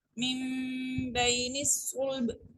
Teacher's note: کو ہم نے رک کے پڑھا چونکہ مشدد ہے یہ، اور با پہ جب ہم نے وقف کیا تو چونکہ یہ ساکن ہو گیا، اس کے اوپر ہم نے قلقلہ کیا ہے